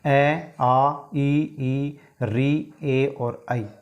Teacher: इनमें हमारे होठ वृत्त की आकृति नहीं ले पाते हैं बल्कि होठ फैले रहते हैं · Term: अवृत्ताकार स्वर